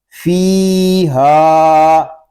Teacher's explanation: فا یا زیر فی، ہا الف زبر ہا، فی ہا. فا کو ہم ایک الف تک کھینچ کر پڑھیں گے کیونکہ یہاں پہ یا مدہ ہو رہا ہے